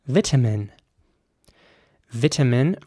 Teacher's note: in British English it would be pronounced vitamin vitamin with an e sound for the I there at the beginning vitamin and a very strong T sound vitamin in American English